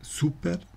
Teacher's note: super wird nicht auf der letzten Silbe betont auf der vorletzten